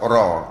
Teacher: dia ada di hujung daun lidah dekat langit keras depan